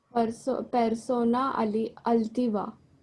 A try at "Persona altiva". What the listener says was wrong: Muy bien, perfecto.